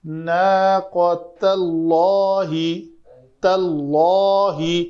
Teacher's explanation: ناقۃ اللہ، تاللہ، لام جو اس میں جلالہ کا ہے اس سے وہ ادا کرتے ہوئے میرے ہونٹ اوپر کو اٹھیں، گول نہیں ہوئے، اوپر کو اٹھے تاکہ وہ پر ہو